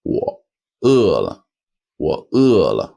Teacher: With that short zombie third tone.